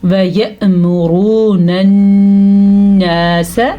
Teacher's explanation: اس نون کے اوپر شد کی وجہ سے ہم یہاں پہ غنہ لازمن کریں گے